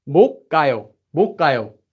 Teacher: And now, remember that really common sound change rule I said, where we have a consonant before a base consonant, becomes double